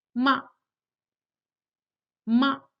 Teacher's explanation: the neutral tone of the fifth tone is pronounced quickly and lightly without regard to pitch. So those syllables with a neutral tone have no tone mark whatsoever, which is the case with the syllable ma when it's used as a question particle at the end of the sentence.